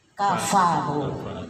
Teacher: Bibir bawah, perut bibir bawah dengan ujung gigi depan atas. Jadi enggak pa bunyinya, tapi ada tiupan fa, ya.